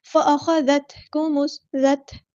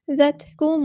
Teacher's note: ذال کو باریک ادا کریں گے، نرمی سے ادا کریں گے ، تا ساکن کی آواز میں ہلانا نہیں ہے، فأخذت نہیں